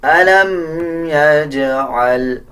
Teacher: جیم کے اوپر جزم ہے، قلقلہ کیا جائے گا